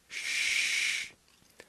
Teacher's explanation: S is a voiceless fricative. Sh is also voiceless, but to make it different from s, pull the tip of your tongue slightly back and up. It is the same sound you make when you want someone to be quiet.